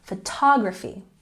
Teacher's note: Photography has the emphasis on the second syllable.